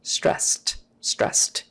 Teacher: there's an sd ending that e is silent so stressed but because the s is an unvoiced sound then we typically make that d we turn it into a t which is unvoiced stressed stressed it's just easier if the word ended in z · Often the final D in words like that will be pronounced with more of a T